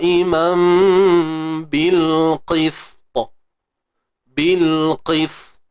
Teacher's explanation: qalqalah yang berlaku ialah qalqalah yang tebal sebab berlaku pada ta